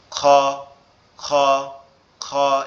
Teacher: আওয়াজটা অনেকটা মনে হবে গালের মধ্যে থেকে আসতেছে, কেমন খ খ খ, এরকম একটা আওয়াজ আসবে।